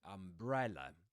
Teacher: in umbrella, the stressed syllable is bre, right? Umbrella, the second syllable.